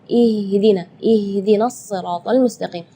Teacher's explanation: makhraj huruf ha itu adalah dari tenggorokan jadi Keluarnya tipis · Ya, itu tidak boleh, itu keluarnya dari dada. Sedangkan makhraj huruf H itu adalah dari tenggorokan. Jadi keluarnya tipis karena H itu termasuk huruf di antara 28 huruf hijaiyah yang paling lemah adalah huruf H.